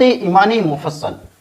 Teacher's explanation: یہاں پہ چونکہ نون ساکن ہے لہذا ہم اس میں اخفا کریں گے، یعنی ناک میں ذرا آواز لے جائیں گے۔